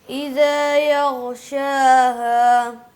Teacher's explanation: غین کو قلقلہ نہیں کرنا, بس ہلانا نہیں